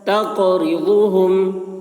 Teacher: قاف میں قلقلہ، تقرضهم یعنی قاف کی آواز ٹکرا رہی، ڈبل نہیں کر رہی ہے۔